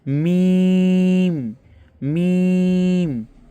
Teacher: এরপর মিম, দুই ঠোঁটের শুকনো অংশ হইতে। মিম শুকনো অংশ মানে বুঝতে পারছেন, যেগুলো ঠোঁটের বাহিরে থাকে, মানে গালের বাহিরে যে স্থান থাকে ঠোঁটের শুকনা, যেখানে শুষ্ক থাকে, ওই শুষ্ক শুকনো জায়গা থেকে উচ্চারণ করতে হবে।